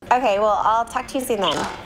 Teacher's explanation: to reduces to T when it's unstressed and followed by a consonant